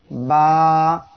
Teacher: বা অক্ষরটি ঠোঁটের ভিজা অংশ হইতে উচ্চারিত হয়। 2 ঠোঁট এর ভিজা অংশ অর্থাৎ এই পাশ দিয়ে উচ্চারণ হবে।